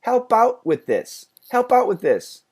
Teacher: And the THs, by the way, go together. We only keep the second TH.